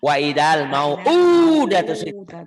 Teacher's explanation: Datu, pendek datunya mah. Yang panjang cuma u-nya doang.